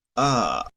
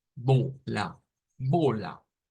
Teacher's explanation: Este es un sonido de una A centralizada. Significa que es una A que debemos de contraer un poquito la lengua.